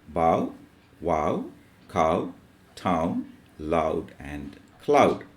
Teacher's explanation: The articulation begins at a and ends where u begin. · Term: ow sound